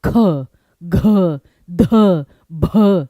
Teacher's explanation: लेकिन जिसको बोलने में पूरी जान लगे ख, घ, ध, भ ये सारे के सारे आपके महाप्राण हैं